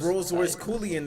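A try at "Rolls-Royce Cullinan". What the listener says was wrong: He doesn't have a Rolls Royce, and it's pronounced wrong as well. It's Cullinan, not Coolian.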